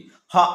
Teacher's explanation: హ అంటే చూసుకుంటే మనకి ఇక్కడ కంఠం నుంచి వస్తుంది